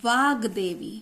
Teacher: ठीक है, त थ द तीसरा वर्ण आया, यहां देखिए तीसरा वर्ण है, ये तीसरा वर्ण आ गया, का के साथ तीसरा वर्ण मिल रहा है, तो ये जो का है ये दा में बदल जाएगा और जो का लिखा है वा के साथ ये गा में बदल जाएगा, आधा गा